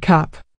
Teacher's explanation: The A in cap makes a short sound like ah.